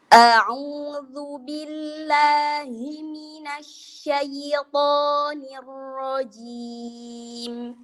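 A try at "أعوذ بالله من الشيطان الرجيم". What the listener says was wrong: Syai jangan syai. Jadi jangan dimatiin. Dia mengalir, jangan syai. Ketinggian. A'udzu billahi minasyaitonir rajim. Bukan syaiton beda. Jadi dialirkan. Biarkan dia mengalir, jangan syai.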